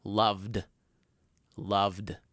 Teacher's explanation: V, which is compared to f, is a voice sound. So all we have to do is add d at the end.